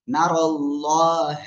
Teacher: তারপরে দেখেন নুন জবর না, র লাম জবর অল, না রল, লাম খাড়া জবর ল, আল্লাহ শব্দের লামের ডাইনে জবর মোটা আওয়াজে পড়তে হবে, রর উপরে জবর তাও মোটা আওয়াজে পড়তে হবে।